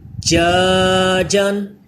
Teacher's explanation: جیم مشدد آ گیا، اس میں قلقلہ کر کے پڑھیں